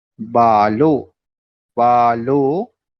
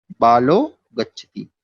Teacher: विसर्ग के स्थान पर हो गया ओ, और ओ को हमने मिला दिया ला में, तो हो गया बालो और गच्छति।